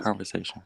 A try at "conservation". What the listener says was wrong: You said yeah, you said conversation, conservation, sir. Break the word down a little more.